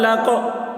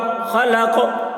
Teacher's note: قاف حروف قلقلہ میں سے ہے اور اس پر جزم ہے، اس لیے قاف میں قلقلہ ہوگا۔